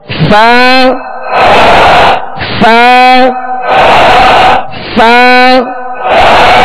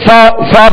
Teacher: اوپر کے دانتوں کے کنارے اور نچلے ہونٹ کے تر حصے سے فا ادا ہوتا ہے